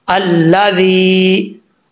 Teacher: या साकिन से पहले जेर है तो इसको एक अलिफ की मकदार लंबा करेंगे